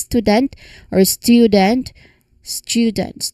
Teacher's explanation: focusing on that immediate flow from the T to the Y sound